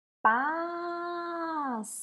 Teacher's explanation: Qual que nós falamos mais tempo? O pás. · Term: sílaba tônica